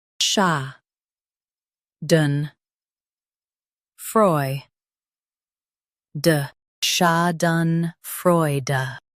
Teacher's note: Stress freu and keep de soft.